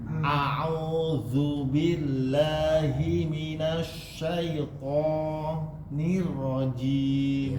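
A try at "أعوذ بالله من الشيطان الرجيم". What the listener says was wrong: Ya, zu-nya sudah hampir benar, tinggal ditipisin sedikit, Pak. A'udzu, jangan dihembus. A'udzu, itu dihembus namanya. Tapi berikan dia mengalir saja. A'udzu billah.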